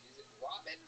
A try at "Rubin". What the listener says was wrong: No, the A makes the same sound as the first syllable in amazing.